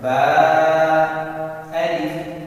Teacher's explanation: با کے ساتھ الف تھا، مد نہیں ہے، اس لیے ہم نے با کو کم کھینچا۔ اگر مد والا حروف ہو تو اس کو ہم زیادہ لمبا کرتے ہیں۔